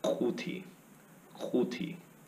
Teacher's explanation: we're actually kind of pushing the back portion of our tongue to the back portion of our mouth, almost where your uvula is, that thing that's hanging down in the back of your mouth.